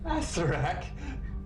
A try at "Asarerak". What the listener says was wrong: Asarerak. extra syllables in there, damn it.